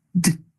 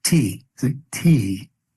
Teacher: For the letter D, you put your tongue in the same place behind those 2 top front teeth, but there's a hesitation. There is more of an effort to push off.